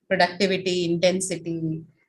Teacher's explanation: the stress is taken on the second last syllable